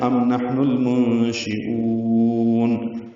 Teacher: او کو لمبا کریں گے اور نون ساکن پہ اظہار کریں گے ، یہ ملا کے پورا پڑھنا ہے، ام نحن المنشئون، مد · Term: مد عارض سکون